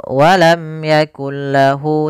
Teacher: langsung dimasukkan ke huruf lam setelahnya kemudian tidak boleh disertai dengan guna · tidak ditahan tapi masuk ke huruf lam karena dia idgham. Kemudian idgham bila gunnah juga ini dari segi kesempurnaannya kita namakan dengan idgham kamil, yaitu masuk secara keseluruhannya. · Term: idgham bila gunah